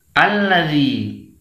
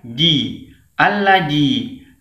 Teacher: ujung lidah kita bertemu dengan ujung gigi seri atas